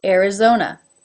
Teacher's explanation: It begins with an A, but it's pronounced as the air as in bear, being followed by the R.